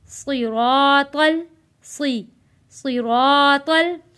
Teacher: स्वाद को मोटा पढ़ेंगे